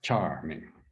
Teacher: Charming. Goes up and then down.